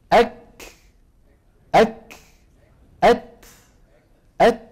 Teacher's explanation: إذن أك أك أت أت، انتبهنا. فصفة الهمس في الكاف والتاء تنوب مناب القلقلة في التخلص مما فيهما من شدة